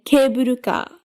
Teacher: The pattern where the first syllable is high and the other ones are low.